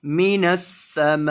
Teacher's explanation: ماں کو لمبا کرنا ہے 3 سے 4 الف کے برابر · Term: مد لازم